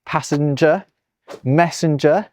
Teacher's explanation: people start putting this nasalized n sound where it previously wasn't. Specifically, they're putting it before a G.